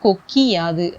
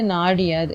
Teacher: First கொக்கு யாதுல கூ வந்து கீயா மாறுது. இந்த மாதிரி வர்றது வந்து இது வந்து தன்னோட ஒரு மாத்திரை அளவிலிருந்து அரை மாத்திரை அளவாக குறைஞ்சி ஒலிக்குது. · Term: குற்றியலிகரம்